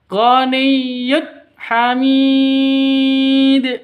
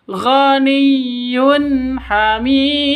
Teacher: Tanwin bertemu dengan ha. Cara bacanya jelas terang ya, tidak boleh didengungkan, tidak boleh disentak. Ganiyud hamid salah.